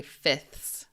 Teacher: Most people don't pronounce this second F. Usually people just say fifths like that fifths.